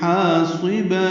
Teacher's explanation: حا وسط حلق سے ادا ہوگا